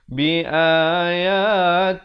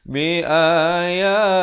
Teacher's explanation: Di sini lafzul jalalah datang sebelumnya, baris kasrah dibaca nipis.